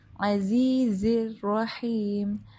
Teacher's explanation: عین جو ہے وہ وسط الحلق یعنی درمیانے حلق سے ادا ہوتا ہے